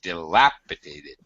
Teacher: the second syllable stress